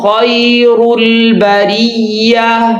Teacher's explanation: ان الذین آمنوا وعملوا الصالحات وعملوا الصالحات اولئک هم خیر البریہ، یا کی آواز کو جھکانا ہے، معروف کرنا ہے، اور یہ یا لین ہے